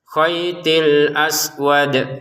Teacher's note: huruf dal dipantulin dengan syarat berhenti ya. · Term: dalnya dipantulkan